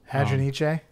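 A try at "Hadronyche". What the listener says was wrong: Yeah, I think you need to pronounce the E.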